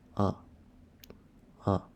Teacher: the fourth tone sound that going down